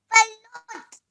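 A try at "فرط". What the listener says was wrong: Farrat. Okay, remember that this is the letter ra, okay? You know, in English language, we have the letter R, yeah? Like remember. Okay, just like that, this is the letter ra. Farrat.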